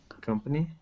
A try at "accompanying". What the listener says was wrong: These kind of blend together. Try to say them separately.